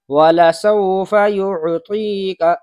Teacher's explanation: ایسے ہی اسم کے اندر جو عین ہے، یعطیکا میں عین، یہ بھی عین حلق سے نکلنا چاہیے واضح طریقے سے۔